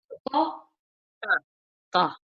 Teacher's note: ta is the letter that is pronounced where the tip of the tongue is touching the gums of the upper front teeth